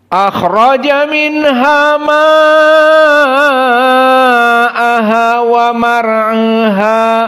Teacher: Maka di sini ada mad wajib muttasil ma'a dalam keadaan al-isba. Adapun jumhur dibaca dengan 4, Hafs menambah 1 menjadi 5.